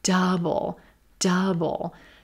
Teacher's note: that second syllables very quick stressing our first syllable